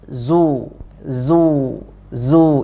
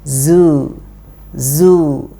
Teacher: Zu harus kita lafadzkan tipis karena zai dia huruf tipis. Yang tebal itu zu, zu, zu itu tebal, harusnya kita tipiskan.